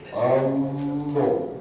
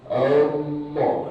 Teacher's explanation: Jadi A itu dipangkal tenggorokan. Kalau dipegang itu getar. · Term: Huruf A, Hamzah